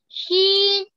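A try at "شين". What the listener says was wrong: जी बहुत अच्छा, बंद कर लीजिए।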